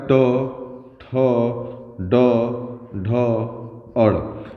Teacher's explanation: ये सब बोले जाते हैं मुर्धा से